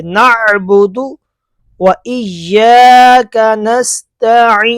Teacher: نعبد پڑھ رہے تھے نا آپ، نعبد نہیں، نعبد، عین ہے، عین گلے کے درمیان سے ادا ہوتا ہے، حلق کے درمیان والے حصے سے